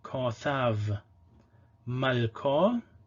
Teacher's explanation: the syllable is closed but it is stressed so it is long